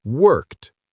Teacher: We match the unvoiced consonant k with the unvoiced t.